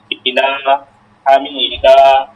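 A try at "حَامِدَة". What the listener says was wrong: হামিদা, টান হবে না কিন্তু, তা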